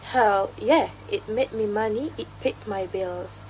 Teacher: It paid my bills." Her speech has a very natural rhythm with throw stresses on words like it's made money paid and bills. Uh the unstressed words such as it's me and my are shorter and quicker creating the typical stress time rhythm for American English